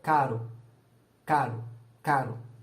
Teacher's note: Quando eu só dou um tapinha, eu faço, por exemplo, caro, ro. É no mesmo lugar da vibrante, só que é uma vez só.